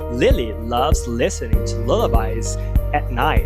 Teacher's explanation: Light L. L claro, porque claramente você vê a língua.